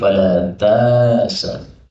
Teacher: ini hamzahnya boleh dihilangkan menjadi fala ta'sa, bacaan untuk meringankan